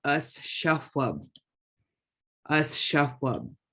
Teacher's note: X raised W, you should be blowing out.